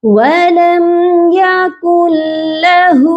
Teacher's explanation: ایک ورڈ ہے چھوٹا سا 2 لیٹر سے مل کر بنا ہوا ہے، اور اس میں دونوں ہی لیٹر ہم مسٹیک سے پڑھ جاتے ہیں، غلطی سے پڑھ جاتے ہیں کہ لام کو کھینچ دیتے ہیں، ہا کو نہیں کھینچتے. آپ نے لام کو نہیں کھینچنا، ہا کو کھینچنا ہے